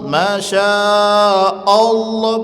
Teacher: Hamzahnya tipis, Allahnya tebal. Jangan Allah.